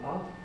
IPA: ʌ